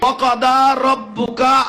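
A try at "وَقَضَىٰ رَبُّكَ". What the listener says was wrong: রব্বুকা। কা এটা টানছেন কেন? কা এটা মধ্যে তো পারি নাকি? এক জবর এক জের এক পেশকে হরকত বলে হরকতের উচ্চারণ তাড়াতাড়ি করিতে হয়। কা রব্বুকা।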